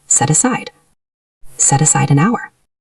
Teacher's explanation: Let's check the pronunciation of set aside. Because set ends with a consonant and aside starts with a vowel, they link perfectly.